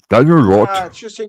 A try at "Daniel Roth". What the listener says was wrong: Daniel Roth. The H is silent in French. Daniel Roth.